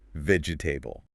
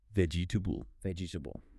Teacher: vegetable >> Four syllables, but in natural English, we delete the middle E. It becomes three syllables.